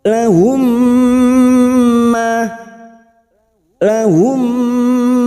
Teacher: mentasdidkan dua mim kaidah idgam Mimi bertemunya mim sukun dengan mim cara membunyikannya mim sukun masuk pada mim berikutnya disertai mendengung selama dua atau tiga harakat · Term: Idgham Mimi